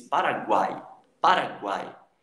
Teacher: O U e o I têm um som mais baixinho, mais tímido. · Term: tritongo